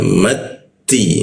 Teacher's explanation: ujung lidah bertemu gigi dia